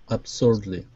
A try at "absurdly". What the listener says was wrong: Good, good.